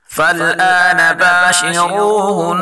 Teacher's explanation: را کو پر پڑھیں گے اور نون مشدد غنہ کے ساتھ پڑھیں گے